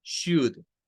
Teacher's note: Miren, la pronunciación de esta lleva un diptongo OU que suena como una U corta